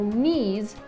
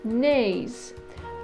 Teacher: This breaking can apply to other words that have an 'ee' sound in them so 'knees' [niz] can become 'knays' [nɪiz]. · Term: ME-breaking